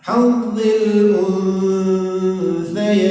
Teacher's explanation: Jadi ketika membaca nunnya kita sudah pada posisi makhraj huruf ta. Posisi makhraj huruf ta, ujung lidah dan ujung gigi atas. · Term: ikhfa